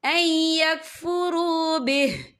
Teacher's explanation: وقف کی صورت میں ہاں جو ہے ساکن ہو جائے گا.